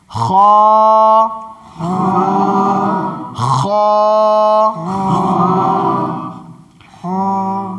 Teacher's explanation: جب بھی خا ادا ہوگا تو تھوڑی خخار کی آواز لے کر کے ادا ہوگی، اور اس میں یہ ہے کہ وہ حرف ہمیشہ موٹا ہوتا ہے